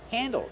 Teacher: use an open A sound like and fan